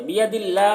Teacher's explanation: अल्लाह के लाम को बारीक पढ़ेंगे क्योंकि इससे पहले ज़ेर है